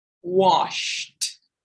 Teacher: The sh sound, just air going through your lips. So washed as a T sound. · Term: unvoiced